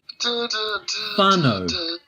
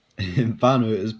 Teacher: the whānau is pronounced as an F. As with all Māori words that begin with WH. Kia ora is a common Māori greeting, and one that you'll likely hear spoken in New Zealand English.